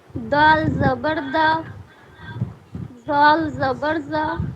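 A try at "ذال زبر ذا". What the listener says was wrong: زال نہیں، زال بالکل باریک.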